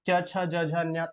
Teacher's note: च छ ज झ न्य तालव्य से